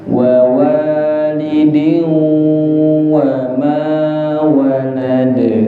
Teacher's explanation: walidin wa idgham bi gunnah. Idgham bi gunnah tidak cuman masuk tapi harus ada mendengungnya dan itu ditahan.